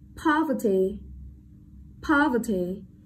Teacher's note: trọng âm rơi vào âm tiết đầu tiên